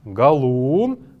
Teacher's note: она имеет какое-то небольшое интонационное ударение вот на букве «у»